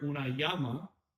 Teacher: It's pronounced like a Y sound, right? Because it is a semi-vowel. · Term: double L